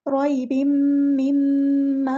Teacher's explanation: मीम पे शद आ गई है, तो गुन्ना ज़मानी हो रहा है